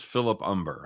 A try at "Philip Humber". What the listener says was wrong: It's Philip Humber, not Umber.